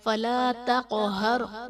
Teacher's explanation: را ساکن سے پہلے حرف پر زبر ہے تو را کو ہم پر یعنی موٹا پڑھیں گے